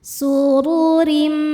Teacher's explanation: Huruf ro dibaca secara tafkhim karena harokatnya dhammah. Cara bacanya ro dibaca tebal.